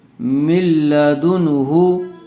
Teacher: نون ساکن کے بعد حروف حلقی میں سے ہا آیا ہوا ہے، اس لیے بغیر غننے کے جلد اظہار کر کے پڑھیں گے